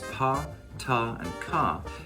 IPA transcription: p, t, k